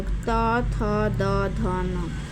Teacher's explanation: त वर्ग में त, थ, द, ध ये दांत से स्पर्श होता है सारे।